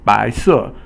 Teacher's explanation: 白 is second tone, and 色 is fourth tone. So the second tone is a rising tone, and the fourth tone is a falling tone